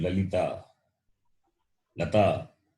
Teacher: La, when you say the tongue touches the base of the upper teeth. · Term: dental